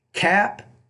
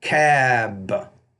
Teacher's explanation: We have the P and the B. The P is a voiceless consonant. The B is a voice consonant.